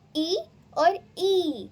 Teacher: छोटी ई से बड़ी ई दुगना समय ले रही है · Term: दीर्घ स्वर